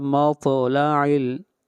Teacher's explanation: طا کے اوپر قلقلہ ہوگا